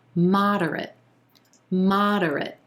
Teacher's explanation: three syllables here emphasis on the first syllable and the ah as in olive